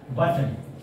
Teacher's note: ये 2 सिलेबल। अब ट और न जो है इसमें हमारे वाउल नहीं है, फिर भी ये एक सिलेबल है।